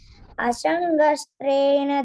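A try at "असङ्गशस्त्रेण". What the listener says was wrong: You are telling Asangastrena. This Asangashastrena.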